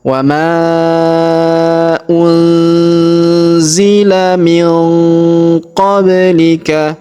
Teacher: huruf ba berharakat sukun maka kita pantulkan atau kita qolqalahkan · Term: qalqalahkan